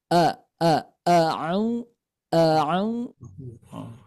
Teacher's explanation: Hamza itu keluarnya dari pangkal tenggorokan kita